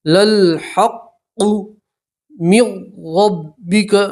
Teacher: نون سکین کا را کے اندر ادغام ہوگا مگر گنہ نہیں کریں گے، ٹھیک ہے، تو نون کو نہیں پڑھیں گے، میم کو سیدھا را سے ملائیں گے اور را کو موٹا پڑھیں گے۔